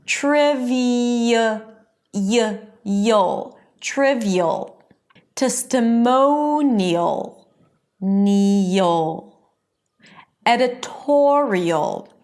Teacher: it's a high e sound and then you shift to a schwa and a dark l. But something in the shift between the high e and thewah creates a y sound. · in all of these words, the stress is on the one syllable before the suffix